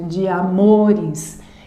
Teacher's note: uma sílaba átona e a próxima tônica iniciada em uma vogal. Então elas se unem, uma sílaba poética